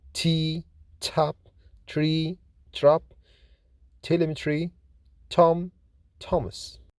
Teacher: T is voiceless, fortis, alveolar, plosive consonant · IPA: /t/